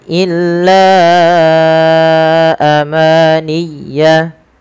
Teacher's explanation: Panjangkan la sepanjang 4 atau 5 harakat karena pada lafal bacaan la di sini ada mad jaiz munfasil, yaitu mad yang wajib kita panjangkan 4 atau 5 harakat dalam riwayat Imam Syatibi.